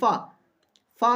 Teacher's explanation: आप देखोगे कि जब फा बोल रहे हो तो उसमें आपके दो जो दंत हैं वो टकरा रहे होंगे।